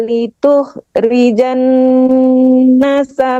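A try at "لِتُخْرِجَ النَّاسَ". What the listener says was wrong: Litukhrijanna, panjangkan nanya.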